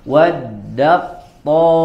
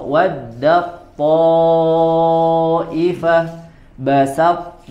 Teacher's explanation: ta langsung diidghamkan ke huruf to, ta-nya tidak dibaca, langsung dibaca huruf to. Waddaqto ifah basat.